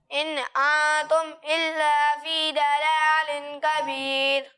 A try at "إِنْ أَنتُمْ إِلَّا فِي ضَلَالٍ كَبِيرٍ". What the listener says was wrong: سب سے پہلے تو یہاں آپ دیکھیں، یہاں لکھا ہوا ہے حمزہ. کیا لکھا ہوا ہے؟ یہ انتم نہیں ہے، یہ ہے انتم. ٹھیک ہے، حمزہ اور عین میں فرق ہے. انتم پڑھیں گے تو غلط ہو جائے گا. ٹھیک ہے، اور یہاں ضاد لکھا ہوا ہے، دال نہیں لکھا ہوا، اسے پر پڑھنا ہے. ٹھیک ہے، آپ نے اسے باریک پڑھا ہے، اور یہاں پہ غنہ بھی نہیں کیا. ضلال کبیر.